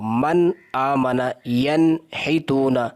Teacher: اظہار کا لغوی معنی ظاہر کرنا، یعنی نون ساکن کو ظاہر کر کے پڑھنا، یعنی اس کے اوپر غنہ نہ ہو